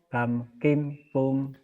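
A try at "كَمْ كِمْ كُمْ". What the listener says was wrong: Bapak bagus, tapi nadanya kayak ketan. Kam kim kum. Kam kim kum. Nadanya nada lepas ya. Nada nggak ketahan. Kam kim kum.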